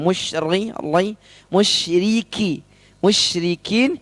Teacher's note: Perhatikan di sini ada huruf ro tipis, musyri, ri. Jangan sampai ketebalan.